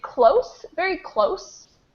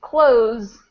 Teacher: This first one is close, very close, with an S sound, close. And the second one is close, with a Z sound.